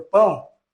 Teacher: o som ele sai pelas fossas nasais parte do som pão o o a é mais forte então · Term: nasal